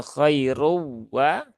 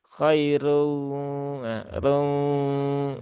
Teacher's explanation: ada udara yang masuk ke dalam rongga hidung sehingga bergetar. Sehingga itulah yang disebut dengan gunnah.